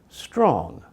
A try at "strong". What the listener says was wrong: So this time you made an O sound. With ah, your mouth is relaxed. Ah. With O, your tongue moves back just a little, but the big difference is your lips come forward and round a little.